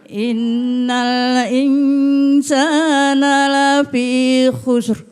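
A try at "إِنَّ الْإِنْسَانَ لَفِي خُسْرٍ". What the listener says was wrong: Jangan ditarik ya, tapi ya, ro tebal itu coba ro. Nah, itu tipis tuh ri. Maju bibirnya ru.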